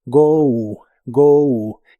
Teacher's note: Se pronuncia como si tuviera una u al final.